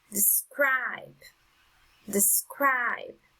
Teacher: the strongest sound is on the second syllable